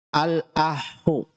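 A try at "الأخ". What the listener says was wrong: Jangan ditasydid akhoknya. Al-akhu. Salah. Al-akhu.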